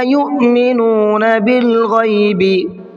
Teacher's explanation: تو یہ حمزہ ساکنہ ہوا، اس کے اوپر سکون ہے، تو حمزہ ساکنہ کے پڑھنے میں جھٹکا ہوتا ہے، اس کو جھٹکے کے ساتھ میں پڑھا جاتا ہے،